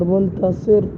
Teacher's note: ہم را کو موٹا کریں گے، اس لیے کہ را کے اوپر کیا ہے، پیش ہے